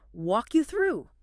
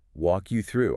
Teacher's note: very but phonetically you have that hard K at the end of walk crashing into the Y of you >> right to keep the flow you don't stop on the K you let the K glide directly into the Y